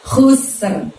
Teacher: kita mengeluarkan huruf kho-nya itu bunyinya adalah dari ujung tenggorokan. Jadi seolah-olah kita sedang ngorok ya teman-teman ya, ada yang bergerak di tenggorokan kita.